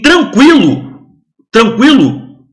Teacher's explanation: i é semivogal é decrescente decresce diminui em tranquilo tranquilo o o ditongo vai aumentando o u o som do U aumenta pro som do I ele vai em direção ao I